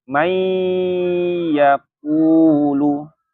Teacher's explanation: Kalau dia setelahnya huruf ya, ya nunnya jadi ke ya. Jadi mai, bukan man lagi. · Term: idgham bi gunnah